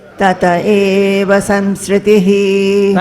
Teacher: That visarga is dropped when it is followed by a swara, a vowel.